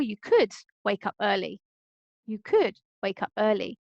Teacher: In this case, could is stressed to highlight that a suggestion is coming